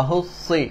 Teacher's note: hujung lidah dia berada di belakang gigi kacip bawah, gigi gunting bawah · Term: huruf sad